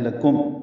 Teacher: میم ساکن پہ اظہار شفوی ہے، لکم ہونٹ بند کر لیں گے۔